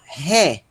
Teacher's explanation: aí nós temos ré já tô dizendo a pronúncia nós temos o Eta que tem um som do é aberto e esse essa está com aspiração forte então vai ficar ré